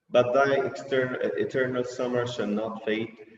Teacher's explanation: Consonants, the poets repeated the same consonant sound ta in the words but and not